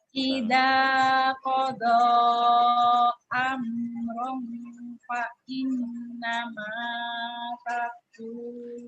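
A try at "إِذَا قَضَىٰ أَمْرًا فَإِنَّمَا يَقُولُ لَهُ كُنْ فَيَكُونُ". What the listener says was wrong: Ya, bukan ta itu titiknya di atas apa di bawah? Di bawah. Idza qada amran fa innama yaqulu lahu kun fayakun.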